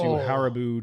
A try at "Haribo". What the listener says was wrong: Emphasis on the wrong syllable.